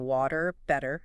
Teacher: That D like sound for a T when it's between vowels or similar sounds like in water. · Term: flap T